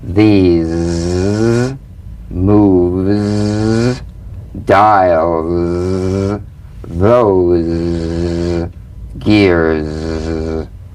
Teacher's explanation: It's in that little space that the Z sound is formed. So feel a smooth, strong vibration in the teeth and in the front of the tongue. Now, sustain the Z in these words. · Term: voiced S sound fricative